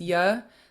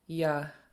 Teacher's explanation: So if you compare it to this ya, there's no tone, so it just stays a low tone